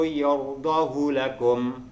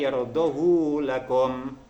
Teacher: lafaz yardahu haknya tidak dibaca panjang, melainkan dibaca pendek